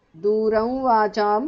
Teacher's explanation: because of sandhi, anuswara changes to the nasal of va